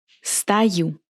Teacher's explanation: I pronounce O as A